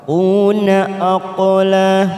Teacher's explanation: qaf sukun qalqalah kita pantulkan qalqalah sugro. Aqla la lam alif la kita panjangkan 2 harokat.